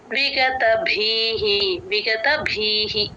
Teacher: భి కి మహాప్రాణం ఉంది గమనించండి అక్కడ విసర్గ హి అవుతుంది